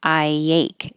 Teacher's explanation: There's an invisible Y because you're going from the high I ache and let it slide down.